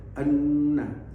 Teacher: ada dengung yang terlalu bindeng yaitu Nun Nun yang bertasdid